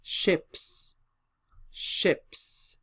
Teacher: And we get births, births. When the word finishes with sound p, voiceless s will follow, and there won't be any change in the pronunciation.